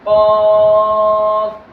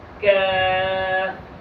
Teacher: اس قاف کو موٹا پڑھیں گے اور کاف کو باریک پڑھیں گے